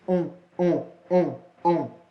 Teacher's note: Não dá para separar o som do O e o som do N. Esse N aí, ele vai apenas anasalar